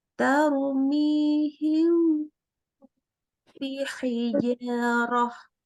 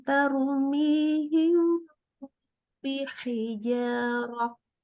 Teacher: ketika mim sukun ketemu ba, ya dengung ya, ditambah gunnah, minimalnya 3 harokat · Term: ikhfa syafawi